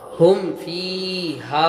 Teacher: میم ساکن کا اظہار، میم ساکن کے بعد با اور میم کے علاوہ کوئی اور حرف آئے تو میم ساکن کو ظاہر کر کے بغیر غنہ کے جلدی پڑھیں گے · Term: اظہار شفوی